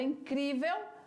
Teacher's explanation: paroxítona sílaba forte é na penúltima